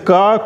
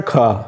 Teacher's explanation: ये जो है ना अल्प प्राण ध्वनि इसको कहते हैं क, और उसी का महाप्राण ध्वनि होता है ख